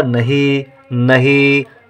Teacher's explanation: ई का उच्चारण है और देर तक है, नहीं तो बड़ी की मात्रा।